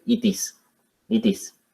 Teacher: es donde tenemos que aplicar este fenómeno de la unión para lograr decir it is it is como si fuera una sola palabra